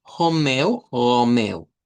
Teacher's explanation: habría una variante que sería, en vez de usar la R uvular, utilizar el sonido de la H.